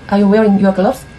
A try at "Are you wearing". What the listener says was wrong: Are you wearing? 이 발음이 좀 빨라요. Wearing. Wearing 이런 식으로. Are you wearing? your gloves? Gloves. Gloves. Gloves. 이런 식으로. Gloves.